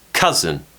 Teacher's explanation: stress is on the first syllable so it's stronger more power on that first syllable